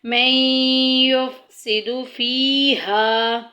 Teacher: نون ساکن کے بعد یا آ گیا ہے، جو کہ یرملون کے حروف میں سے ہے، یا، را، میم، لام، واو، نون، یہاں پہ ادغام ہوگا